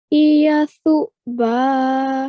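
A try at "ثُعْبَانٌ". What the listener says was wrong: Very well done. That was really good pronunciation.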